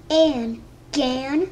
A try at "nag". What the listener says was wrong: You're reading it backwards now, honey. So read the first letter first. So it's N.